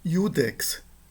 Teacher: Esse I inicial é uma semivogal.